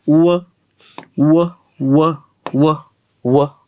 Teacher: आणि याचा उच्चार करत असताना नीट बघा, याचा उच्चार करत असताना तोंडाचा चंबू केलेला आहे. उ व म्हणजे दोन्ही ओठांचा वापर करावा लागतो. म्हणून इंग्रजांनी व ला बायलॅबियलमध्ये टाकले. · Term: अर्धस्वर